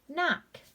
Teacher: KN combination, the K is going to be silent, so it would be just the N sound. N-ak, knock. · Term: silent K